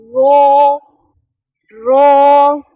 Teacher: रॉ जबान की पुश्त वाला किनारा ऊपर वाले दांतों के साथ लगे तो अदा होता है रॉ। बैक साइड जो हमारी टंग की जो है पुश्त किनारा वो थोड़ा सा ऊपर के दांतों को टच होता है तो रॉ अदा होता है